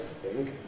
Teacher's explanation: find the Nucleus, which is “think”. Practise a Low Rise